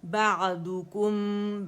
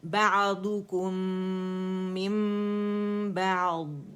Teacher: عین اور با باریک